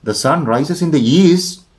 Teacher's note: when we talk with such a rising tone or rising tune the meaning is different